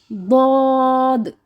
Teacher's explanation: ہماری زبان کا جو سائڈ کی کروٹ ہے، جو سائڈ کی جگہ ہے، جب وہ اسی سائڈ پہ دائیں طرف اپنی داڑوں کے ساتھ لگے گی تو لفظ ادا ہوگا ضاد. زبان ایسے سیدھی ہوتی ہے جیسے ہاتھ ہوتا ہے، اس کی رائٹ سائڈ جو ہے وہ اسی جگہ پہ داڑوں کے ساتھ لگے گی اور لفظ ادا ہوگا ضاد.